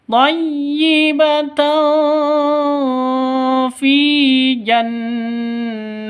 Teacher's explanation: Ini samar didengungkan siap-siap ke huruf fnya karena ikhfa Hi ikhfa Hakiki dengung disertai dengung thaibat fi jannati · fi panjang dua ketukan karena ada ya mati diawali dengan kas kasrah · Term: Mad asli